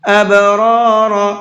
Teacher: ابرار، با کے اندر قلقلہ کریں گے، اب اس طرح سے، اور دونوں را کو پر کر کے پڑھیں گے، ابرار۔ وَإِنَّ الْفُجَّارَ لَفِي جَحِيمٍ، فجار، یہاں بھی را کو پر کر کے پڑھیں گے۔